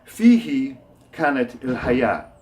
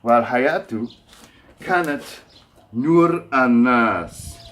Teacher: we don't pronounce the last vowel here because haya here is at the end of a phrase. There's a breath after it.